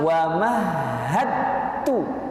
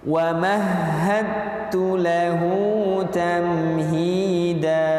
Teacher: Maka kita membacanya bukan wa mahadtu, tapi langsung wa mahadtu, meleburkan huruf dal sempurna, secara sempurna, keseluruhan, sehingga tidak ada sama sekali sifat dan juga makhraj dari huruf dal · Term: idgham mutajanisa